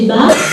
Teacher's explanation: Si vous mettez votre main au niveau de la gorge, vous prononcez, non parce que c'est peut-être un peu de bruit. Si vous prononcez bas, vous devez sentir une vibration. Une petite vibration, c'est la vibration des cordes vocales, donc, qui correspond en fait à ce petit signal qui est ici.